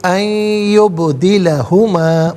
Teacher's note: نون ساکن ہے، اسے یا کے ساتھ ملا کر یا کی آواز کو غننے کے ساتھ ادا کریں گے. یہاں یرملون کا قاعدہ اپلائی ہوگا.